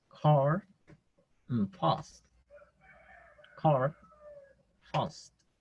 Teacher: Tenemos la misma A, pero en este caso el símbolo fonético es una A con 2 puntitos. En este caso suena más como O, entre A y O.